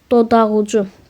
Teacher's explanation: Dodaq ucu sözünün vurğusu u hecasının üzərinə düşür